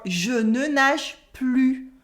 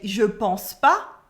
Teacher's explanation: In everyday spoken French, French people tend to cut as much as they can, and usually the ne is the first one to disappear. So in real conversations, we would say je pense pas, I don't think so, je pense pas.